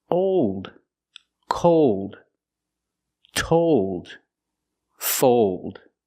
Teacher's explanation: Here we're using a long O sound, but it changes because of the dark L.